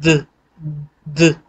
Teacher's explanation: अब आप द बोलेंगे तो ऑटोमेटिकली आपके गले में वाइब्रेशन आ जाएगी